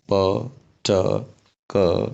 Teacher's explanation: यी प्रोड्युस गर्दाखेरि muscle tension बढी हुने रहेछ, ब्रेथ फोर्स पनि बढी हुने रहेछ, र भोकल कोर्ड्सहरूको भाइब्रेसन नहुने रहेछ। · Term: फोर्टिस कन्सोनेन्ट्स